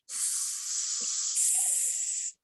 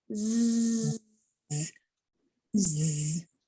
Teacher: the s sound if you just say you don't feel a buzz but if you say the z sound like z z you should feel a buzz there